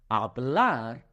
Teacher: a Spanish speaker might say something like hablar, and it has a soft roll at the end